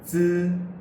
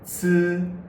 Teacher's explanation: Z uses a weaker path of air and c uses a stronger path of air.